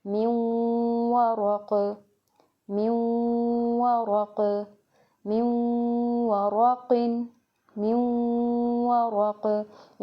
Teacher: हालत वक़्फ़ में क़ाफ़ की जो दो ज़ेर हैं वो साकिन हो जाएंगी, क़ाफ़ साकिन हो जाएगा और कलकला भी होगा, साकिन क़ाफ़ के ऊपर कलकला करते हैं, मिन वरक़, मिन वरक़, मिन वरक़िन, मिन वरक़।